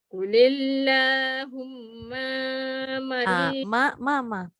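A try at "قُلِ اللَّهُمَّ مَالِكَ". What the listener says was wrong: Ma yang pertama pendek, ma yang kedua panjang.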